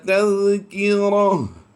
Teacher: جب بھی گول تا پر وقف کیا جائے گا اسے ہا ساکن سے بدل دیں گے